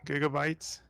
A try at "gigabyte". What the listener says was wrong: Not gigabyte, but with the J.